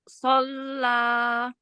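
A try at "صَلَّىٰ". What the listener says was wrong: Angkat lagi pangkal lidahnya, angkat lagi. Fo, tebalkan. Fo,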